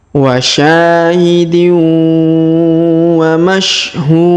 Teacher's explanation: Karena di depannya juga terdapat waw sukun sebelum huruf pemberhentian. Dan huruf pemberhentian di sini huruf din kita sukunkan sehingga kita baca pantul atau qalqalah